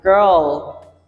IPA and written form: ɡɜrl (girl)